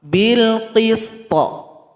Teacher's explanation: Yang pertama huruf qalqalah harus ada pantulan.